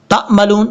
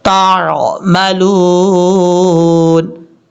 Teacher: تا کو جب عین سے کنیکٹ کریں گے تو عین کو نارمل طریقے سے پڑھنا ہے، اس کو حمزہ کی آواز یا جھٹکے کے ساتھ نہیں پڑھنا